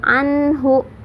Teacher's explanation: nun sukun bertemu dengan huruf izhar ya, jadi dibacanya jelas. Nun sukun bertemu dengan huruf ha.